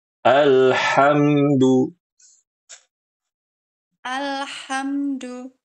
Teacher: Alhamdul jangan diqalqalah alnya. Al-nya jangan qalqalah.